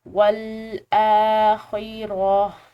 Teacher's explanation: ٹھہرنا بہتر ہے تو ہم اس پر ٹھہراؤ کریں گے، اور ٹھہراؤ کی صورت میں گول تا جو ہے یہ ہا شمار کی جاتی ہے تو ہم اس کو ہا پڑھیں گے